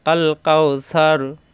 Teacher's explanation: এখানে আসছে স্টেশন, এখানে আমরা যদি অক্ষ করি তাহলে এই সা মিলবে রয়ের সাথে, এই রয়ে সাকিন হয়ে যাবে, জবর পাত হয়ে এখানে সাকিন হয়ে যাবে, সার র মোটা হয়ে যাবে